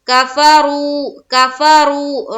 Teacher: را کو ہیوی بنائیں گے، پر پڑھیں گے